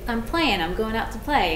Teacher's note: I drop a lot of the G's on in words so instead of like playing it'd be I'm